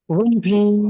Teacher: মিম সাকিনের পরে বা ও মিম ছাড়া যদি বাকি অক্ষর আসে, মিম সাকিনকে বিনা গুণনায় জাহির করে পড়তে হবে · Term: ইজহারে সাফাবি